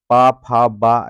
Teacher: आपके दोनों ओठ बंद हो जा रहे हैं · आपके ओठ दोनों अटैच हो जा रहे हैं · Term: ओष्ठ वर्ग, ओष वर्ग